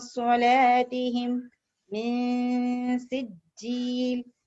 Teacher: تو اخفا وہ تو میں نے آپ کو سکھا چکی ہوں پہلے, that was basic, کہ اخفا it means after noon sakin and tanween you have to make nasal. I say noon must not be clear.